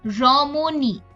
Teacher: তাহলে উচ্চারণ ও এর মত হয় যেমন রমণী এখানে আমরা দেখছি মাঝখানের অ টা কিন্তু আরেকটা অ ধ্বনির পরে বসেছে এবং ই ধ্বনির পূর্বে বসেছে কাজেই উচ্চারণটা ও এর মত হচ্ছে